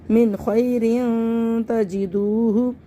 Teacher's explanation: من خیرن تجدوہ، ان کو سب کو جلدی پڑھنا ہے اور واو مدہ کو کھینچ لیں گے، واو ساکن سے پہلے پیش ہے، اس کو کھینچ لیں گے